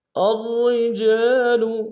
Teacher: الرجال حمزہ کو را کے سامنے لانا ہے، را کے اوپر تشدید زور دیں گے۔ پہلے را موٹی، دوسری را باریک ہوگی، اور جیم کی سالف مد ایک انداز میں کھینچیں گے۔